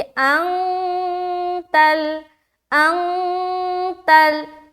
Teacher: इख्फा कहते हैं नाक में अपनी आवाज को छुपाना। नून की जो आवाज है उसे हम नाक में छुपाते हैं, ये कहलाती है इख्फा करना।